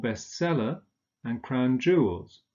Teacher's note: bestseller and crown jewels both are stressed on the second element